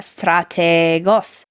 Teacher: you lengthened out the Ada strategos even though there's no long mark because Ada is inherently a long vowel